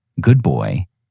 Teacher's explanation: In the phrase, good boy, the D in good becomes something closer to a B because your mouth is already preparing for the B in boy.